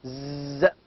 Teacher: It is a voiced sound. Z. You can feel the vibration.